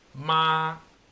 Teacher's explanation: un tono que empieza en una altura y termina en la misma altura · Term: tono uno, tono 1